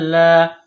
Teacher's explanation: حمزہ کو لام کے ساتھ ملائیں گے تشدید کی وجہ سے لام کے اوپر کڑا زبر ہے ایک الف کے برابر کھینچ کر پڑھیں گے